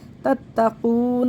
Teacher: تَتَّقُونَ نہیں پڑھنا ہے، بہت سے لوگ تَتَّقُونَ پڑھ دیتے ہیں، جماؤ نہیں دیتے اس کو تشدید کو، اس کو جماؤ سے پڑھنا ہے تَتَّقُونَ، قاف کو موٹا پڑھنا ہے تَتَّقُونَ، واو مدہ کو بھی کھینچنا ہے، ان اخفا کرنا ہے.